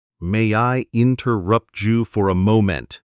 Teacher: You used the Jew sound for interrupt you.